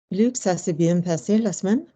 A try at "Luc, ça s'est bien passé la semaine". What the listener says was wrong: The mouth is too open, isn't it? When you close your mouth, you're not pushing on the chest enough. So therefore, you feel there's nothing. So to make sound again, you go, la semaine. And I'm just like, ça s'est bien passé la semaine. Use this, send it forward.